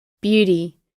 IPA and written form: ˈbjudi (Beauty)